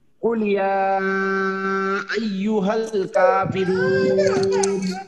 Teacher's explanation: কাফিরুনে কি হইলো, কাতে 1 আলিফ টান, কিন্তু রুনে 3 আলিফ টান।